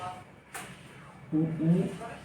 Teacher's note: ऊ बहुत हल्का सा मुंह खुलेगा आपका, देखिए बहुत हल्का सा, मतलब कि ना के बराबर, ऊ ई मतलब बिना हल्का सा ओठ घुमाए आपका काम हो जा रहा है। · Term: संवृत्त स्वर